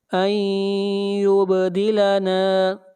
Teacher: نون ساکن کے بعد حروف یرملون میں سے یا ہے، ادغام مع الغنہ کریں گے